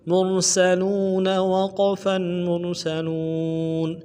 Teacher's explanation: موٹا ادا کرنا ہے، میم کو را کے ساتھ ملانا ہے، سین سیٹی والا حرف ہے، سیٹی سے باریک ہوگی ، سین کو اس طرح ادا کریں گے سٹی کے ساتھ · وقف کی صورت میں نون کو ساکن کریں گے، بغیر وقف کے اگر آگے پڑھنا چاہے تو نون کو زبر کے ساتھ پڑھیں گے